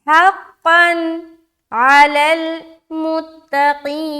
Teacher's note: अब यहाँ पर देखिए हा को सीने की तरफ से निकाल रहे, क़ाफ़ दो ज़बर क़न मोटा करते हुए क़न। अब यहाँ पर दो ज़बर की तनवीन के बाद हर्फ आइन आ रहा है, यहाँ पर इजहार का कायदा बन रहा है, लिहाजा हमें नून की आवाज़ को ज़ाहिर करनी है